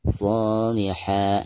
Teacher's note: Saat membaca shi di sini, huruf tersebut dipanjangkan sebanyak dua harakat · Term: mad tabi'i